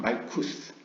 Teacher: 약한 트 발음을 S처럼 낸다는 게 아슈케나즘 유대인들의 특징이고요